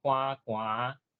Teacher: 两个字的时阵寒寒，第五调变第七调 ，三个字的时阵第一个字就要变做第九调，变做寒寒寒。啊，共款歹，歹是第二调的字，理论上变调就是变做第一调，歹歹，三个字就